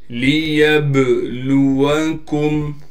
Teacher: با حرف قلقلہ میں سے ہے، با ساکن ہے، لہٰذا یہاں پر قلقلہ یعنی آواز کو ہلائیں گے